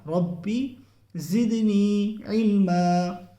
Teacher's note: عین ہے وسط حلق یعنی حلق کے درمیانی حصے سے نکلے گا